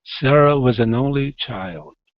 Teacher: we're going to come up on only, down on child. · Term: intonation